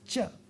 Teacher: a palatal non aspirated and non-voiced sound